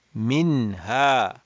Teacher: so we know that this is going to be ishar so we are not going to stretch the gunna